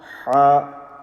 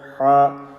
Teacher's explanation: Ha, middle of the throat, ha.